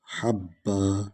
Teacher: اصل میں حبن تھا لیکن آیت ختم ہو گئی ہے، وقف کر رہے ہیں، اس لیے اس کو حبا پڑھ رہے ہیں۔